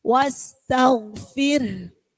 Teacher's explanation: Jadi setelah bunyi fir kemudian ditambah hembusannya hak.